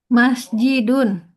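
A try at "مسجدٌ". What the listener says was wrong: Oke, betul.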